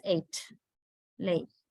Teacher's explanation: It moves to a glide at the end of the sound. Glide means a kind of changing from one position to another position.